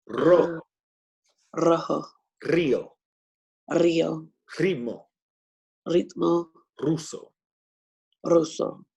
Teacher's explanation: If it's the first letter of a word, it will also produce the rolling sound.